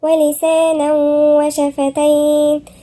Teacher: لازم ندي حق الغنة وهي مقدار حركتين، وهي هنا تسمى إدغام بغنة